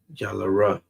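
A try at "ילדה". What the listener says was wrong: That's not a ra.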